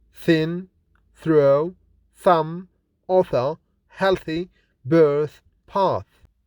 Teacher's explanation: The consonant th is voiceless and fortis. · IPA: /θ/